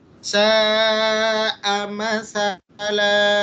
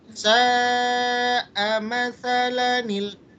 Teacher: Di rumus yang ketiga ini dia lebih memperjelas lagi kalau kita waqaf berhenti maka berlaku bacaan mad iwad. Tapi kalau kita lanjutkan ketika dia berlaku pada bacaan nun wasol, maka bacanya jadi pendek.